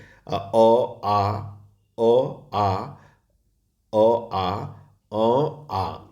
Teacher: तो कंठ से ह्रस्व स्वर अ का उच्चारण होता है। दीर्घ स्वर आ का उच्चारण होता है। निरनुनासिक जो स्वर होते हैं मौखिक स्वर वो औ और आ दोनों के होते हैं और अनुनासिक स्वर जो होता है औ और आ ऐसे होते हैं। · ये आपको कंठ से बोले जाते हैं। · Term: कंठ स्वर